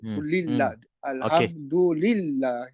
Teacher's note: huruf dal di tepi lidah bahagian depan dan huruf lam pun di tepi lidah juga, mungkin disebabkan hampir berhampiran tempat makhrajnya, tempat keluarnya, maka dia boleh terlompat ataupun termasuk dalam dal secara cepat.